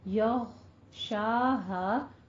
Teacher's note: غین حروف مستعلیہ میں سے ہے، اس لیے پور رکھیں گے آواز کو اور قلقلہ نہیں کرنا، یغو نہیں کہنا ہے. ٹھیک ہے، یغشاہا لیل میں آپ نے یا لین ادا کرنی ہے.